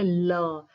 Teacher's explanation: जीवा के अग्र भाग द्वारा अवरोध करने पर जो वायु का अगल-बगल से निकल जाना जैसे ल। अब आप ल देख रहे होंगे तो जीवा का जो आगे वाला भाग है वो अवरोध कर रहा है। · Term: पार्श्विक